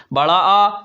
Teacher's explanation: विवृत वे स्वर जिनको बोलने में हमारा मुख द्वार मतलब पूरा खुलता है।